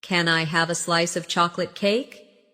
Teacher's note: Stress chocolate cake. So, it sounds delicious and inviting.